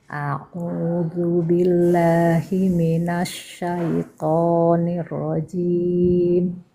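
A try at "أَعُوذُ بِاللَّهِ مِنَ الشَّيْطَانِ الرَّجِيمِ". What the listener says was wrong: Coba huruf A-nya tekan lagi Bu.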